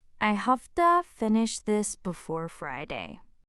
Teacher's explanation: have to becomes hafted. The V turns into a soft, breathy F sound.